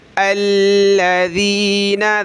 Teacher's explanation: الذین، دیکھیں حمزہ کو لام کے ساتھ ملائیں گے، لام پہ تشدید ہے تو اس کو سخت کریں گے، کیا پڑھیں گے؟ الذین، ذال پہ زبان نکالیں تھوڑی سی، ذال یا زیر ذی، نون زبرنا۔